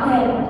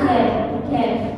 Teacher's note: huruf b-nya itu kan nggak begitu terdengar